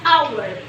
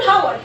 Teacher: الاتش هنا سايلنت. الاتش هنا سايلنت مش بتتنطق